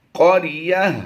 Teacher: گول تا کو وقف میں ہم ہا ساکن سے بدل دیتے ہیں، یا ہا زبر یہ بن جائے گا۔